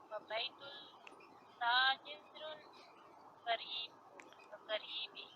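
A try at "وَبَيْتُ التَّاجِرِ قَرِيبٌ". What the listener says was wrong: و بیت التاجری قریبن. دیکھیں اس قریب کو ذرا زوم کر کر دیکھیں تو اس کے اوپر تنوین لگی ہوئی ہے. و بیت التاجری قریبن. تاجری. قریبن.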